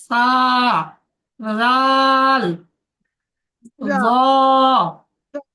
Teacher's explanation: জিভের আগা এবং সামনের উপরের দুই দাঁতের আগার সাথে লাগিয়ে উচ্চারণ হয়